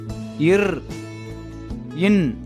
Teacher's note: இந்த இரண்டு மெய்யெழுத்துக்களும் மேல்வாயை நாக்கின் நுனி மிகவும் பொருந்துவதால் பிறக்கின்றன